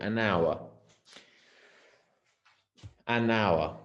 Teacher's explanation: We use it with the vowel sounds. So in the case of hour, the H is silent. You don't hear it.